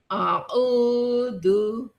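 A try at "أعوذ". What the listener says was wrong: Jangan a. Jangan a. Ainnya ke hidung, Bu.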